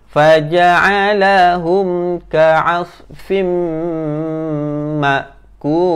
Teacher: Automatik dia jadi dengung sebab mim, jumpa je mim yang bertanda sabdu, maka kita kena tekan.